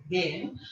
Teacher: আর এখানে এ that means এটা হচ্ছে স্ট্যান্ডার্ড ইন্টারডেন্টাল ফ্রিকেটিভ, যেটার উচ্চারণ হচ্ছে আমরা দেন বলি ইংরেজিতে দেন